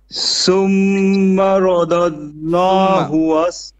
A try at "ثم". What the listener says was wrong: Thumma. Tha, not seen, but tha. Thumma. No shadda on the scene.